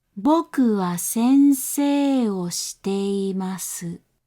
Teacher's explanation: し て い ま す is slightly lower in pitch than 先 生 を. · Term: terracing